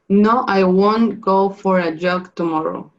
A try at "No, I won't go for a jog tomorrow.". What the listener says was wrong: Very good, very good.